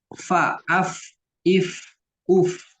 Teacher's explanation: muncul dari badan bibir bawah bertemu dengan ujung gigi seri atas nah yang dipergunakan di sini adalah badan bibir dengan ujung gigi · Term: makhraj fa